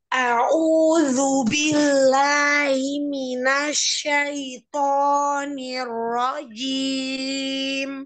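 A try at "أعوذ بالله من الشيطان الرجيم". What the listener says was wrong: A'udzunya disempitin, mundurin. A'udzu A'udzu A'udzu billahi minasyaitonir rajim.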